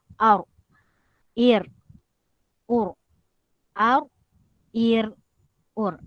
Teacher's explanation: Ujung lidah naik kepada lelangit paling belakang. Okey, keluar bunyi huruf ar ataupun huruf ro.